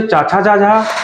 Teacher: अब चाचा जाजा वाली लाइन ये तालु से बोली जाएगी